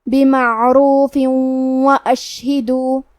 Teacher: ادغام کا معنی ہے حرف کو حرف میں داخل کرنا تو ہم تنوین کو واو میں ملا کے غنہ اور تشدید کے ساتھ یہ حکم کو ادا کریں گے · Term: ادغام بغنہ